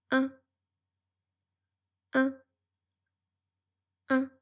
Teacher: Pour prononcer le son 1, la langue reste plate et détendue plutôt au milieu de la bouche. L'air sort par la bouche et par le nez. C'est un son nasal. Les lèvres sont légèrement étirées, comme pour un petit sourire.